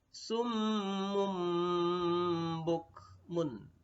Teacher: Nah, summun bertemu dengan huruf ba, mim berbaris tanwin atau bertemu domaun bertemu ba, maka bacanya adalah menjadi mim mati. Mun itu menjadi mum ketika bertemu ba, namanya iklab.